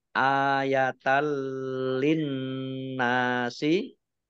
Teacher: Masuk dengan tidak mendengung Langsung masuk ke huruf lam, ditandai lamnya ada tasdidnya, tetapi tidak mendengung. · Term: idgham bila gunnah